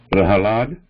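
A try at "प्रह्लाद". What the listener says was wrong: Prahlada. So here again ha and la is under that. So ha is consonant part, la is the full part, and a vowel. So Prahlada.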